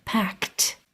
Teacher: depends on the sound that came before it in this lesson that e is going to be pronounced as a t a voiceless T only air no voice